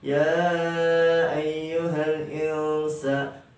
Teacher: Ada nun sukun bertemu dan huruf sin. Sin itu salah satu huruf ikhfa. Dibacanya samar, hukum bacanya ikhfa.